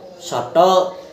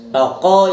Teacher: Adalah vokoid belakang tengah bulat dan semi terbuka. Pengucapan bunyi ini dengan mengangkat lidah bagian belakang setengah tinggi, bentuk bibir bulat, dan rongga mulut setengah tertutup.